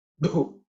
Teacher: This is the fourth letter in the ta varga, so it has to be aspirated.